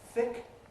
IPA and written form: θɪk (thick)